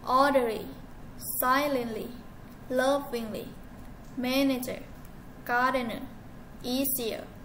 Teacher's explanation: For three syllable words ending with the suffixes er or li, the stress is placed on the first syllable.